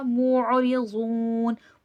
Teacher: मुअरिज़ून, आइन की सिफ़ात को सही से वाज़े करिएगा। आइन वसतुल हलक से अदा होगा। आइन और हमज़ा में फ़र्क करिएगा, इसको मूरिज़ून नहीं कह दीजिएगा। · ज़ुआद हुर्फ़ मुस्तआलिया है, मोटा करके पढ़ा जाएगा